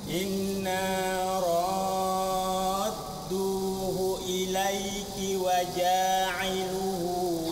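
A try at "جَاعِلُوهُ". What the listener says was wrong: Hati-hati, lu-nya panjang apa pendek?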